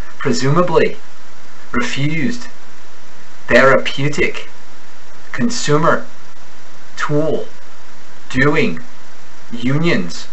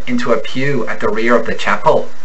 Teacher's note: This upward lilt is particularly noticeable on the long U.